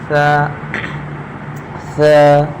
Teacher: ثا کو دونوں دانت کے درمیانی حصے میں اگر ہم زبان رکھیں گے، زبان کو باہر نہیں نکالیں گے دانتوں سے، بلکہ زبان کو دانتوں سے اندر رکھیں گے، ثا، ثا، ایک الف کے برابر کھینچیں گے اور دانتوں سے باہر زبان کو نہیں نکالنا۔